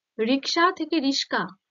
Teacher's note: দেখো, র ক দন্তস্ব, র দন্তেস্ব ক, একই রকম ব্যঞ্জন ধ্বনিগুলো আছে, শুধু স্থান পরিবর্তন করেছে। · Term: ধ্বনি বিপর্যয়